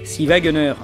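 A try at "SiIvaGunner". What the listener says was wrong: Non mais en fait on dit Silva Gunner. Non, c'est Silva. non, en fait c'est parce qu'ils mettent un I pour faire le L majuscule parce que c'est Sil. Sil.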